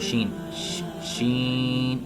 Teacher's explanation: जुबान का दरमियान और बिल मुकाबिल ऊपर का तालू इससे शीन और जीम अदा होती है ये देखिए अपनी जुबान का जो दरमियान है इसको ऊपर वाले